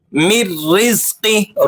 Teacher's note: را باریک ہوگا لیکن اس کے ساتھ آپ نے سختی سے ذرا اس کو پڑھنا ہے کیونکہ را مشدد بھی ہے، تو مشدد ہے سختی سے پڑھا جائے گا، اور را کے نیچے زیر ہے اس لیے آپ نے اس کو باریک کر کے پڑھنا ہے۔